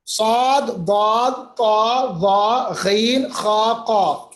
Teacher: صاد ان 7 حروف میں ہے جو ہمیشہ پر پڑے جاتے ہیں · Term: حروف مستعلیہ